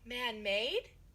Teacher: ngữ điệu đã đi lên ở chỗ man-made. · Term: ngữ điệu đi lên